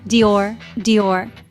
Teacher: with a soft d and a y just one smooth syllable